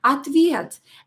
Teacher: because O is not stressed, we will pronounce it as A.